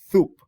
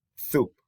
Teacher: the word soup in the mild category will become thoop, like a lisp, dental lisp, thoop. And then moderate is going to take the S completely out and put another sound, which is a T.